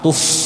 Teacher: Itu tadi bukan tupe ya, tadi kayaknya pakai pak p itu, tupe sidu, harusnya pakai fa, tuf, dialirkan angin, tuf sidu itu ya.